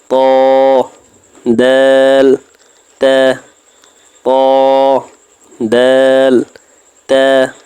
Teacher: তালুর সঙ্গে লাগাইয়া র 11 নাম্বার মাখরাজ জিহ্বার আগা সামনের উপরের দুই দাঁতের গোড়ার সঙ্গে লাগাইয়া